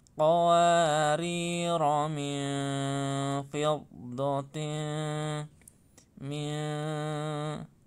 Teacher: Nun sukun bertemu fa, bacaan fa ya, harus samar-samar.